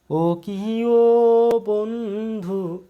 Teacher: এই ও ধ্বনিটি প্রলম্বিত হচ্ছে বা বিলম্বিত হচ্ছে বা টেনে টেনে উচ্চারিত হচ্ছে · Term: প্লতস্বর